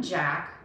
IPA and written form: ʤæk (Jack)